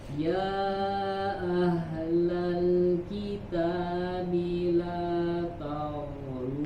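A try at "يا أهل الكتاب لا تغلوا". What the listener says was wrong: Ta-nya tipis juga. La ta. Huruf goinnya baru tebal.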